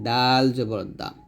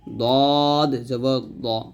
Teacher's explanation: দাল যখন উচ্চারণ করবেন জিহ্বার আগা সামনের উপরের দুই দাঁতের গোড়ার সঙ্গে লাগাবেন